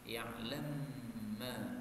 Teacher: ini mim ketemu mim, ini boleh idgham menjadi ya'lam ma